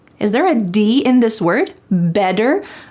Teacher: In American English, a T that is surrounded by vowels or vowel sounds will change to a D.